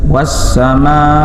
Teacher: Was-sama, was alif lam syam siyah. Was-sama mad wajib muttasil, panjangnya 6 ketukan